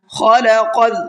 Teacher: خا کو بھی پر کر کے پڑھنا ہے اور قاف کو بھی پر کر کے پڑھنا ہے